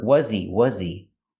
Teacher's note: When you say was he, the H in he is silent because he is not a stressed word. So you hear was he.